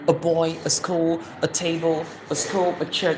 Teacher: If you hear anybody calls it ah say no it's not strong it's weak.